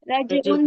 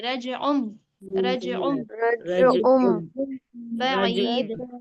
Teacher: تنوین کی آواز کو ظاہر نہیں کرنا، تنوین کی آواز کو میم سے بدل کر پڑھنا ہے